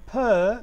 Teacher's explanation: there is going to be the temporary stoppage in the oral passage, and this stoppage is because of two lips, because they are tightly together. This is voiceless.